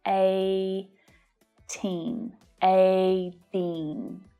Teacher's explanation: It's more common to hear the flap T here because it's between those two vowel sounds.